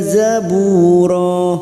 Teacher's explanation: fathah tanwin yang dibaca wakaf selain tak marbuto namanya Mad Iwat cabang dari mad thi'i dua harakat